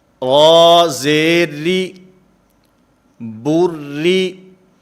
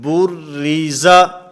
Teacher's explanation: را کے نیچے کسرہ ہے، زیر ہے، اس وجہ سے اس را کو باریک پڑھا جائے گا، اس را کو پر نہیں پڑھا جائے گا.